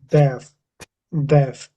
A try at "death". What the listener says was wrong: that's definitely getting there. That sounds pretty good actually. But if you're using your lower lip to get that sound, it's going to come out like an F. F. if I say that now as if that was an F on the end, it'd be deaf, deaf.